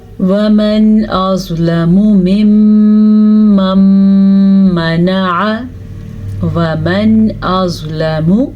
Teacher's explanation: نون ساکن کے بعد حمزہ آ گیا ہے تو نون ساکن کو ظاہر کر کے بغیر غننے کے پڑھیں گے، وَمَنْ أَظْلَمُ، میم کو لمبا نہیں کرنا، لام کو بھی لمبا نہیں کرنا کیونکہ ان کی مقدار اتنی ہی ہے۔